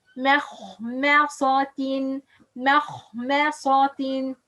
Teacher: This word have meme, it's light, and the kha, it's heavy. Meme light, صاد heavy, and ta is light.